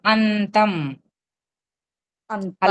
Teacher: త ముందు వచ్చిన అనుస్వరం ఎన్ కింద మారుతుంది